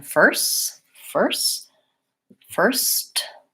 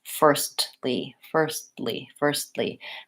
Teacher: lastly first ly firstly firstly and in this case when I when I say first I'm saying my aspirated T releasing it but when I'm saying first ly that goes back to our stop T